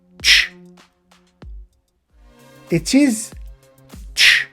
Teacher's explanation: It is ch. It is not tesh. Again, we make no sound between t and sh. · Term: affricate sounds